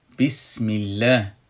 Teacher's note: با صدای تیز ادا میشه و صدا از شکاف وصل دو دندان پیش رو خارج میشه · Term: صفیر